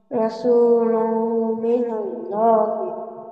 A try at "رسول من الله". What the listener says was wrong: را را को मोटा करें रसूल من الله